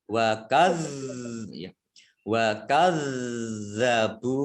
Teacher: zalnya dibaca double, ada tasdidnya